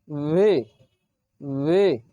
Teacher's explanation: ভি এবং এফ একই জায়গা থেকে উচ্চারিত হয়, নরমভাবে উপরের দাঁত নিচের ঠোঁটের উপরে স্পর্শ করে